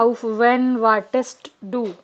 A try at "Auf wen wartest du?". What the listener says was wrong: The E is long here. When you say auf wen, is when there's a double consonant. W-E-N-N. Yeah, then it is short. Otherwise, it's a long vowel.